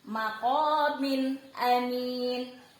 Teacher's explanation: Jadi n-nya ini maqamin. Ada baris 2 bertemu dengan salah satu huruf hijaiyah, alif. Nah, n-nya dibaca jelas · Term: izhar halqi